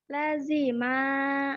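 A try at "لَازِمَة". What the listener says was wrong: Salah. Panjangnya salah.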